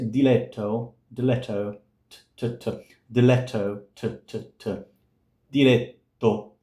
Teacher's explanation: The Italian is more front compared to the English t. It's a little bit more in the back.